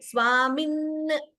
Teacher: But Dvitvam is possible at the end of a word also. Swamin. There two n are heard.